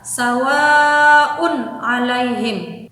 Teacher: Nah, itu tanwun bertemu dengan huruf ain, dibacanya jelas. Jadi tanwunnya dibaca dengan jelas, tidak boleh samar ataupun dimasukkan. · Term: izhar